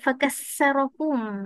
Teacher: Bila huruf tha dia jumpa, dia menukarkan menjadi sin.